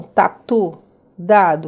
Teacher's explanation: Os lingodentais, que são tatu, dado, que é o t e o d, aonde a língua toca atrás dos dentes incisivos da frente